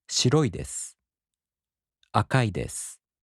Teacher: the accent falls on the mora before い. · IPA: [shiroꜜidesu] [akaꜜidesu]